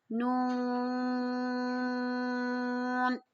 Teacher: نون کی آواز ناک میں آنی چاہیے، ٹھیک ہے، ناک سے ادا ہوگی ہلکی سی